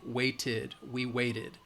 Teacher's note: wait, it has that T sound, so we know that it's going to, the ED is going to be an id, waited, we waited.